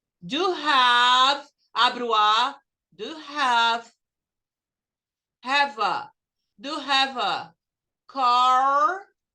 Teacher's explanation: Em inglês, você junta o do com you, vai ficar do have, abre o A, do have a, do have a car.